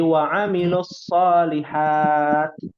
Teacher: Wa amilus solihati, berhenti. Kalau berhenti, taknya dibacanya sukun, diwakafkan sukun